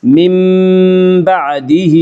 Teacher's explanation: ثم اتخذتم العجل من بعده، من بعده میں قلب ہوگا، اس کا قاعدہ یہ ہے کہ نون ساکن یا تنوین کے بعد اگر بائے تو قلب ہوگا، یعنی نون ساکن اور تنوین کو میم سے بدل کر غنہ کے ساتھ پڑھیں گے